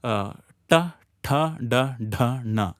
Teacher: All of them from the tongue flicking against the roof of the mouth.